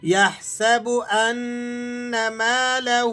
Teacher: ہا پر الٹا پیش ہے اور اس کے ساتھ ساتھ مد ہے، تو دونوں کی رعایت رکھتے ہوئے آپ نے اسے ذرا کھینچ کر ادا کرنا ہے